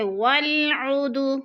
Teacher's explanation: والعد، عد پہ جو ہے دال ساکن ہے اور حروف قلقلہ میں سے ہے تو ادھر قلقلہ کریں گے، یعنی لفظ کو ہلا کر پڑھیں گے